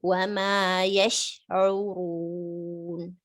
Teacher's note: sheen has this tafashi spreading sound, so give it proper time so that it's properly pronounced with the sh sound